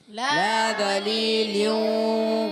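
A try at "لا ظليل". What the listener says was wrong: وا کو موٹا رکھنا ہے، لا ظلیل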